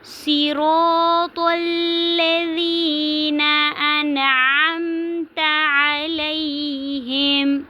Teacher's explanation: انعمت پہ اظہار ہو رہا ہے کیونکہ نون ساکن کے بعد حروف حلقی میں سے عین آ رہا ہے، تو اس کو ہم نے نون کو ظاہر کر کے پڑھنا ہے